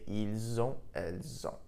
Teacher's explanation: because on, O-N-T, begins with a vowel sound, we link the two sounds together